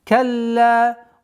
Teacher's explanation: Удвоение ляма, потом ударение в размере двух огласовок.